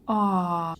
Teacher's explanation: поток воздуха не встречается ни с губами не зубами не с языком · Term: гласными звуками